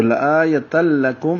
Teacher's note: تو یا کو لمبا نہیں کریں گے. تا پر تنوین ہے، 2 زبر اس کے بعد لام آیا، یہ بھی ادغام ہوگا لیکن ادغام غننے کے بغیر ہے. ادغام بلا غنہ ہے، ادغام بدون غنہ ہے، اور ادغام کامل ہے.